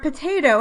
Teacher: the word potato has one primary stressed syllable-- the second syllable-- one secondary stressed syllable-- the third syllable-- and one unstressed syllable-- the first syllable